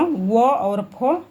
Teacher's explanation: दंतोष्ठ, मतलब ऊपरी दांत व निचले ओठ से, दंत्योष्ठ से।